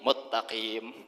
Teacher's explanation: huruf sinnya dimasukkan dalam huruf ta tadi menjadi muttaqim